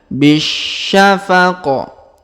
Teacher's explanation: huruf Bi langsung sambung ke huruf Sya yang berharakat tasdid